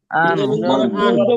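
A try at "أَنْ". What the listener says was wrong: আন, একবার স্পষ্ট। আন, আইন এই না না না, এত না তো, এটা আইনের উচ্চারণ হবে না তো। আন, সোজা আন। আন আন আন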